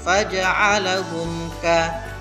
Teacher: Mim mati bertemu dengan kaf, maka hukum bacaannya adalah izhar syafawi. Maka cara membacanya, mim mati harus dibaca dengan jelas